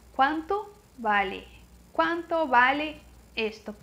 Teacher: Não esquece que em espanhol não tem V, é som de B, o B fraco que eles falam.